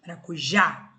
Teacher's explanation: maracujá o já é a mais forte